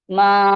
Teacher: پھر میم الف زبر ما ہے، اور اس پہ وہ مد لگا ہوا ہے، مد منفصل لگا ہوا ہے، تو میم کو 3 to 5 کاؤنٹس کھینچیں گے